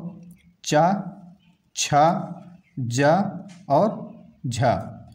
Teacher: स्पर्श संघर्षी व्यंजन में हमारे 4 वर्ण आते हैं, जो चा, छा, जा और झा, 4 वर्ण।